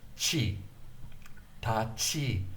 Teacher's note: The T gets such an emphasis on the aspirated point. Aspiration is the sending out of breath.